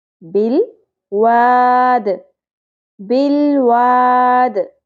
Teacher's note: دال ساکن پہ قلقلہ ہوگا، وقف کی صورت میں زیر جزم میں بدل جائے گی